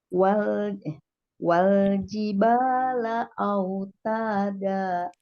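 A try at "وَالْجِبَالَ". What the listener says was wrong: Kurang kurang lepas. Wal jibala autada. Autada. autada. Memelas, Bu. Tinggal memelasnya ya. Wal jibala autada. Wal. Wal kurang tinggi. Wal jiba. Masih kurang tinggi. Wal jiba. Lepas, Bu, lepas. Seperti ibu teriak saja. Wal jibala autada. Masih kurang lepas, Bu, kurang lepas dan kurang tinggi. Wal. Wal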